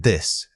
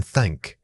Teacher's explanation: the voiced sound as in this and the unvoiced sound as in thank. To create the unvoiced thank, gently place your tongue between your teeth and blow air over it like a careful whisper.